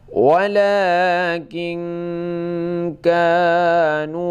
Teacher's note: la panjang, king itu agak samar, dengung ya, agak dengung. Kanu, ka panjang 2 harakat